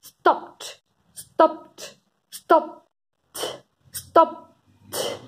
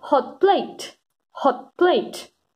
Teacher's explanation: have another sound another consonant afterwards it is very common that we do not release the first plosive sound